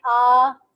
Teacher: फिर है पास, फिर अगेन लॉन्ग वॉवल है, पास बोले आ, फुली ओपन है आपकी, ठीक है, जबान मुंह फुल ओपन हो जाता है, back part of the tongue raise होता है, और position of the lips totally neutral है।